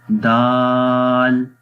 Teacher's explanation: باریک پڑھیں گے، دال کو موٹا نہیں پڑھیں گے۔ اس کی زبان بھی دیکھیں اوپر کی طرف نہیں جا رہی ہے بیک سائڈ سے، تو دال کو باریک پڑھتے ہیں